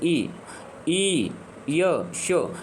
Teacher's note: ये तालव्य से बोले जाने वाले हैं